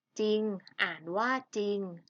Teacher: ให้ออกเสียงเฉพาะพยัญชนะตัวหน้าเท่านั้นนะคะ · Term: คำควบกล้ำไม่แท้